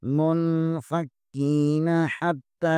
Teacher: یہاں پر نون ساکن کے بعد فا حروف اخفا میں سے ہے، یہاں پر اخفا ہوگا